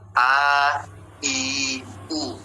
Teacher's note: Kalau fathah dia terbuka A, kalau kasrah dia ke bawah rahangnya I, kalau dia dhammah maka dimunyungkan U. Jangan setengah-setengah.